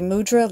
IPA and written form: muˈdrɑː (mudra)